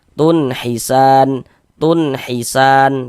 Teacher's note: Jadi bunyi non soqon atau bunyi tanwinnya dibaca jelas. Kemudian tidak didengungkan, tidak dighunahkan, maka dibaca pendek saja. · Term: izhar halqi